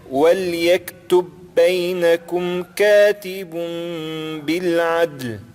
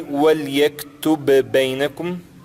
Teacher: Eu não falei وَلْيَكْتُبْ بَيْنَكُمْ, está errado dessa forma. Eu tenho que juntar o primeiro bé do وَلْيَكْتُبْ, sem vogal, com o بَيْنَكُمْ, que é o bé com vogal